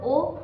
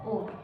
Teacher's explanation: একটি মৌলিক স্বর এবং একটি অর্ধ স্বর একসঙ্গে উচ্চারিত হচ্ছে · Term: যৌগিক স্বর